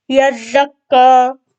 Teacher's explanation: یہ ہوتا ہے سیٹی والا حروف، اس کو ہم نے زا پڑھنا ہے